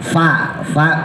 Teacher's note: bibir bawah dikenain sama Gigi atas Fa Ya bukan bibirnya ditempelin dua-duanya kalau ditempelin dua-duanya Entar jadi ba sama mim lat salah latf